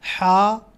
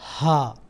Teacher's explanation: جب ہم ہا پڑھتے ہیں آواز اندر کی طرف جاتی ہے، اور دو چشمی ہا جو ہے وہ ہا، اس کی آواز باہر کی طرف